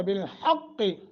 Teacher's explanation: قاف کو موٹا کریں گے، رک جائیں تو قلقلہ بھی کرنا ہے، اگر نہیں رکیں گے تو قلقلہ نہیں ہوگا۔